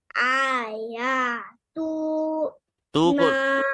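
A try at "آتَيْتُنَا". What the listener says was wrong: तू को लंबा नहीं करें, बाकी ठीक पड़ा है।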